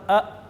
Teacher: حلق کے آخر سے جو سینے کی طرف ہے، وہاں سے حمزہ اور ہا ادا ہوں گے۔